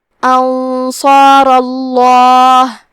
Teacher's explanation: کیونکہ حرف را پہ زبر ہے تو لفظ الجلالہ مطلب کلمت اللہ کے لام کا حکم ہے تفخیم، تو ہمیں حرف اللام کو موٹی آواز میں پڑھنا ہے